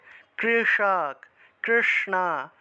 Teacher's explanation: মূর্ধন উচ্চারণ হলো মূর্ধা দিয়ে জিহভাটাকে উল্টিয়ে উপরের দিকে লাগাতে হবে